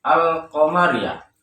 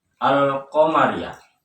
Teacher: Pada lafaz ini terdengar jelas bunyi huruf al-nya, alif lamnya. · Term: izhar qamariyah